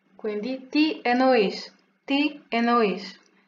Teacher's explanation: si pronuncia come se fosse una, soltanto una N